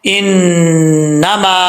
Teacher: نون کے اوپر شد ہے، ایک الف کی مقدار غنہ کیا جائے گا